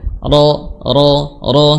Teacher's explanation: Salah satu sifat yang tidak ditunaikan secara berlebih, ya, yaitu huruf ro, ya, sifatnya sifat takrir, getaran, ya, getaran ringan